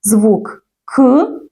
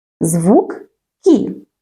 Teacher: у слові кит звук к звучить твердо А у слові кіт звук кі звучить м'ягко